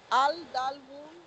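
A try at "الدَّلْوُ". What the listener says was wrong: No, this is a river Shamsi, so Lam will be silent. Ad Dalvun. Ad. Join alif with dal. Ad-dalvun.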